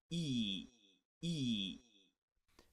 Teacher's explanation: the top left corner it's a close front sound e e this e sound is where the tongue is as close as possible to the roof of the mouth without creating an obstruction